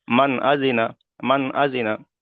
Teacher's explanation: হামজা এসেছে। তাহলে নুন সাকিনের আওয়াজকে বিনা গণ্যায় জাহির করে তাড়াতাড়ি পড়তে হবে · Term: ইজহারের কায়দা